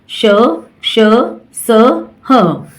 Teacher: इन व्यंजनों का उच्चारण करते समय वायु मुह के विभिन्न भागों से रगड़ खाती हुई बाहर आती है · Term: उष्म व्यंजन